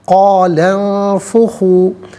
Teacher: قال انفخوا، قال میں لام پر زبر ہے، اسے انفخوا کے نون ساکن کے ساتھ ملائیں گے، درمیان میں سے الف یعنی حمزہ کو حذف کریں گے۔ نون ساکن کے بعد فا حرف اخفا آ رہا ہے تو نون ساکن کو اخفا کے ساتھ پڑھیں گے، ناک میں آواز لے جا کر گنگنانا اسے اخفا کہتے ہیں